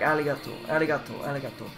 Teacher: The domo sounds like domo, and the arigato has a softer R sound, not an American R, but more of a trilateral flip, like an L.